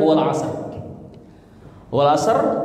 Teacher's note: berarti dia rnya dibaca tipis